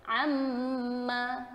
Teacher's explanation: Jadi mim tutup rapat. Jadi kalau mungkin sebelum ni orang baca dia tak rapat, maka tak sempurnalah sifat bagi huruf mim tersebut.